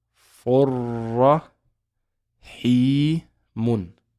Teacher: we know that the noon in there is going to be dropped. And we're going to go straight to the ra.